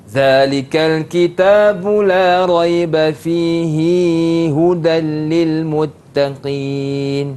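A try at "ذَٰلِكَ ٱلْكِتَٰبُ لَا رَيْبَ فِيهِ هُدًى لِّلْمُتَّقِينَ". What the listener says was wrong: Mungkin sekali lagi sebab dah jadi macam ketiga harakat dah tu. Fihi hudal.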